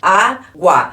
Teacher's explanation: este u aqui ele é mais fraco e o a é mais forte